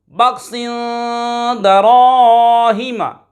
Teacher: بخسن دراہم، بخسن دراہم، با خا زبر بخ، سین 2 زیر سن، بخسن، دال زبر دا، را الف زبر را، درا، ہا زیر ہی، دراہی، میم زبر ما، دراہم، بخسن دراہم۔ یہاں پر 2 زیر کی تنوین کے بعد دال حرف اخفاء میں سے آ رہا ہے، غنہ کر کے پڑھیں گے۔ خا حرف مصالیہ میں سے ہے، پر یعنی موٹا پڑھیں گے ہمیشہ، اور الف سے پہلے زبر الف مدہ، را کے اوپر زبر ہو تو را کو پر پڑھتے ہیں یعنی موٹا پڑھتے ہیں، دراہم۔